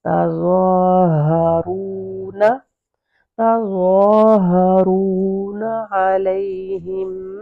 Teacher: ہا گلے کے بالکل سینٹر سے نیچے آئے ، جہاں گلا آپ کا ختم ہو جائے گا تو وہاں